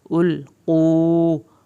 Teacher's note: القو، یہاں پر لام نہیں ہلائیں، قاف کو پر کریں، واو ساکن کو کھینچنا ہے